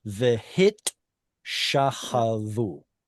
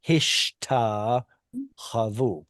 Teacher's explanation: So in order to maintain the tav, the sibilant letter, the sin, sheen, samech, whatever, is swapped with the tav so that you can still hear the tav. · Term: metathesis